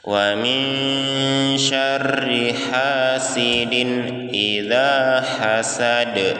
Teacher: Min syarri itu ikhfa, berdengung, ditahan 2 harokat.